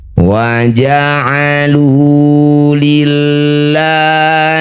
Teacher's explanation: lafaz Allah jika didahului kasrah maka lamnya baca tarkik baca biasa saja